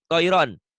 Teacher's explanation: Itu penyakit orang seberang, ronnya jadi ran.